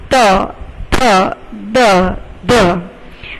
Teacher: જ્યારે કોઈ પણ વર્ણ બોલતી વખતે તમારો મુખની અંદર જીભ છે એ દાંતને સ્પર્શ કરે એને દંત્ય કહેવાય છે